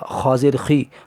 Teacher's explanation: خا کو پر پڑھیں گے اور زیر کو جلدی پڑھیں گے، ذرا بھی نہ کھینچیں گے۔